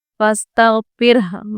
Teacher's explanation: را ساکن سے پہلے زیر ہے اس لیے اس کو ہم باریک پڑھیں گے، اور یہاں پر ہم تھوڑی سی ہاں کی آواز نکالیں گے، چھوٹی ہاں۔